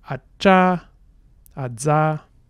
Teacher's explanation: you have that stop onset and then the release is a fricative. So those are obstruents. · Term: affricate